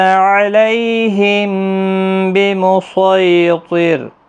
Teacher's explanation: ہم میم ساکن کے بعد با آیا ہے متحرک، تو یہاں پر اخفاء شفوی ہوگا · یہاں سین نہیں پڑھا جائے گا، صاد پڑھا جائے گا